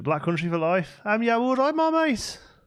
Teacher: Proper slow, proper long, really soft vowels, adding in loads of extra consonants in every word.